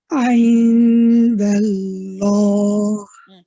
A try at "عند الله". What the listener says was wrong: So your first lam, Pupaji, is light. So you're saying indallah, right? I want both lams have to be heavy.